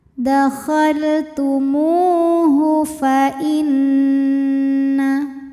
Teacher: Huruf nun dihukumi dengan wajibul gunnah atau gunnah musyaddadah karena nunnya bertasydid, maka dibacanya dengung. Ada bunyi n tahan sampai ada suara masuk hidung